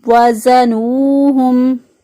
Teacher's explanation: ہا جو ہے اس کو اقصی حلق سے ادا کیا، یعنی گلے کا وہ حصہ جو سینے کی طرف ہوتا ہے وہاں سے ہا ادا کیا